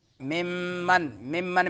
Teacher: نون میم مشدد ہے تو غنہ زمانی۔